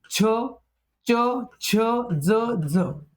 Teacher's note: आता दंत तालव्य म्हणजे दात आणि टाळू. दात आणि तालू यांचा वापर करून तयार उच्चारले जाणारे दंत तालव्य.